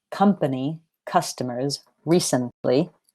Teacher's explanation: have 3 syllables, but the stress is on the first, not the second.